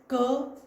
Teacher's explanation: क वर्ग में कंठ का प्रयोग होता है